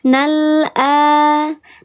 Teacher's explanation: Dibacanya lamnya jelas, ditahan atau tawasud dia dialirkan sedikit. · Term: lam qamariyah